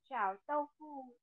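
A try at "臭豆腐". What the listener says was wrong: No, no, no, no. Âm Âu mà. Âm Âu, Âu, Âu. Châu. Châu.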